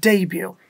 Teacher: এখানে কিন্তু একটা T আছে, বাট এই টিটা উচ্চারণ হচ্ছে না